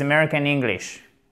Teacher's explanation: c'est une prononciation, voilà, globalement, qui est très nasale, donc avec le nez et la gorge aussi